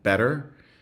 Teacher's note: so flapping as in better that is not at all a British pronunciation but it's used often in British singing